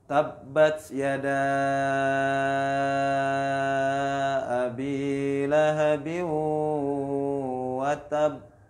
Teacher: Jadi kol-kolannya ditahan karena ada tasydid atau syiddah.